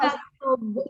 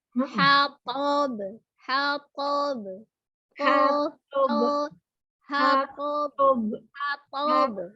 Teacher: Ya, lebih tebal huruf to daripada baknya. Jangan baknya yang lebih tebal.